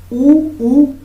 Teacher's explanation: जैसे ऊ ऊ बोलेंगे हमारा ओष्ठ में कुछ परिवर्तन होगा, तो इसलिए ऊ ऊ ओष्ठ से होगा।